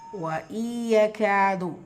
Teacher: நூன் சுக்கூனுக்கு அப்புறமா யா இதுகாம் பில்குன்னா இணைச்சி குன்னா செஞ்சு ஓதணும்.